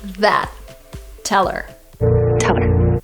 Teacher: when these words go unstressed, people tend to just omit the letter H and the sound that it corresponds to.